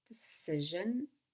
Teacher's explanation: I want to go down on the second syllable in decision so that I can go up on the last syllable.